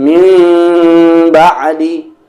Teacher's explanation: Sebagai contoh, mim ba'di, nun bertemu dengan ba, terjadi hukum iqlab. Dan yang paling penting cara membacanya yaitu nunnya berubah menjadi mim dan ditahan 2 harokat